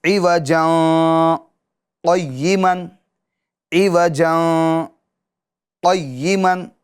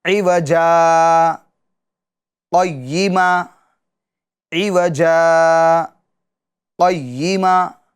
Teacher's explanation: دو زبر کو الف سے بدلیں گے اور سکتہ بھی کریں گے